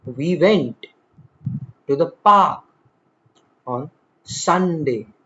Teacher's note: Notice how we glide over to the and on while emphasizing went, park, and Sunday. This contrast produces the natural cadence of English. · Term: stress time language